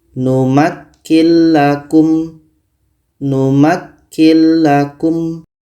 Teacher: Lam adalah huruf idgham bila gunnah. Maka nun mati ini kita masukkan ke la dan tidak boleh dengung.